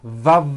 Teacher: consonants and they are both produced exactly the same way except the F sound is unvoiced and the V sound is voiced they are both produced by contacting your upper teeth to your lower lip it sort of feels like you're biting down on your lower